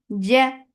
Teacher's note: Ja give very sharp sound. Jim is shidda letter. There should not be escape of any sound or breath.